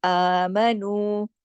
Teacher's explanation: الف پہ دیکھیے کھڑی زبر ہے، ایک الف کے برابر پڑھی جائے گی